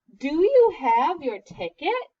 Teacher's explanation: hear how my voice goes up because it's a question